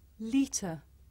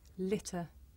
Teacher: the difference between this sound the long vowel e and another sound the short vowel I